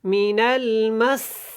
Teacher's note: سین کو سیٹک کی آواز کے ساتھ سختی کے ساتھ ادا کریں